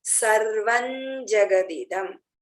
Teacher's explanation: अनुस्वार के बाद ज आएगा तो आधा म के बदले में आधा न आएगा